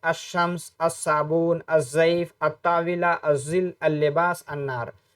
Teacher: الف لام لگایا جائے گا تو ہم لام کو نہیں پڑھیں گے، بلکہ ڈائریکٹ اس کے آگے جو 14 الفاظ میں سے کوئی بھی لفظ آئے اس میں اس کا ادغام کر دیں گے، جیسے الشمس، الصابون، الضیف، الطاولہ، الظل، اللباس، النار. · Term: حروف شمسیہ